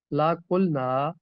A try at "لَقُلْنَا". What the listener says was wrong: لا کو کھینچنا نہیں، لقلنا